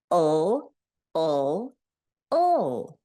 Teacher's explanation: when I make the ul sound, my tongue tip goes up